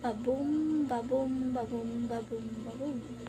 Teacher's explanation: this is 10 syllables with a unstressed and then stressed pattern group into 5 units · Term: iambic pentameter